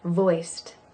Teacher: And the D at the end of voiced sounds like a T.